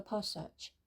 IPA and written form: ˈpæsɪdʒ (passage)